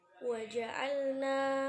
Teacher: Kemudian pada lafaz waja'alna termasuk matobi'i, karena fathah bertemu dengan alif maka dibaca panjang 2 harokat.